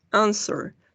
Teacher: Claramente tenemos acá consonante, vocal, consonante, but the stress is in the first syllable.